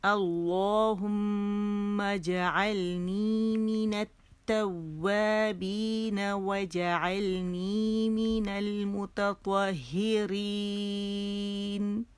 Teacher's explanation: میم پہ غنہ 2 کاؤنٹس کا، اور جیم پہ قلقلہ